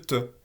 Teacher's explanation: le theux est une occlusive sourde qui est aussi alvéolaire